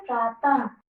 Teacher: इसका जब हम उच्चारण करते हैं तब आखिरी में कौन सी ध्वनि निकलती है? हा की ध्वनि निकलती है। · आखिरी में हा की ध्वनि निकल रही है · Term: विसर्ग